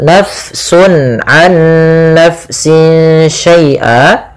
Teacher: di sini fa-nya dialirkan karena fa memiliki salah satu sifat yaitu sifat hamas, yang dimana dia jaroyanun nafas, harus mengalir nafas kita di dalam melafalkannya.